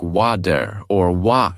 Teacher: In American English, it is often pronounced like wad or w where the t sounds almost like a quick d · Take a simple word like water, for example. In American English, it is often pronounced like water or water, where the T sounds almost like a quick D. In British English, it might sound more like water, with a clearer T sound at the end.